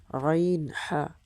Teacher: দুই নাম্বার মাখরাজ হলকের মধ্যখান হইতে